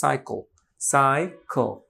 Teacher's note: সো কনসোনেন্টের সাথে যখন মিশে যায় তখন আর মাঝে আর কোনো কিছু আসে না, কুইক উচ্চারণ হয়ে যায়, সাইকল, সাইকল, খ, খ, খ, ল খুব কুইক, রাইট? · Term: সিলাবিক কনসোনেন্ট